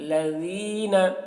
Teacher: الذین، لذین ذال ہے تو ذین، لذین نہیں کہیں گے، لذین ذال کی آواز باریکی کے ساتھ